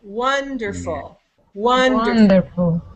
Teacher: you can hear that the first one is higher longer and louder